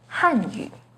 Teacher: The pinyin and tone for Hanyu is with the 4th falling tone on Han